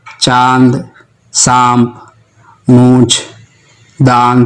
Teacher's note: अनुनासिक ध्वनि है, जिसे नाक और मुंह से उच्चारित किया जाता है, जैसे चांद, सांप, मूंछ, दांत आदि।